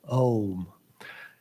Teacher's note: It's just O. But in English and in Sanskrit, it's considered to be a diphthong. That means that during the pronunciation of the vowel, the position of the mouth changes